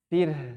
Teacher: Ra tipis ya, sebelumnya kasrah. Kemudian haknya disukunkan.